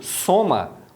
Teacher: o o tem som de u é fechado